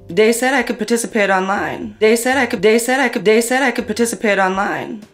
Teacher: TH stopping, so that might be using something like a D sound for where you see a written TH